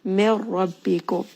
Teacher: Mir rabbikum, ra here is going to be causing this idgham, and this is going to be without gunna, meaning that you are merging this nun sakin together · So there is no hint of that nun. You just merge it together with the ra. Ra is going to be heavy.